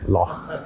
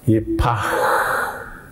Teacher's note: a long, breathed out sound, an outgoing, long, drawn out sound. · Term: het